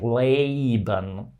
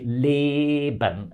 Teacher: happens so in German if you have a long vowel um it has exactly the same sound quality from the beginning to the end